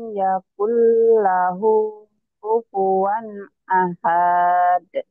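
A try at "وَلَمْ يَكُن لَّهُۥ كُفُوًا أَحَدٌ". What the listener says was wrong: kenapa panjang saya tanya? Ada mad nggak di situ? Ada mad nggak ahad? Nggak ada mad, ingat itu patokannya. Kalau nggak ada bacaan panjang, nggak ada. Itu ya, kan nggak ada, itu pendek semua. Ahade, kayak mohon maaf, kayak orang judes, kayak orang males, kayak orang marah.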